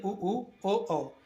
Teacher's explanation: आप बोल के देखिए उ, ओ, औ, तो मुंह हमारा गोल हो जाता है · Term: व्रतमुखी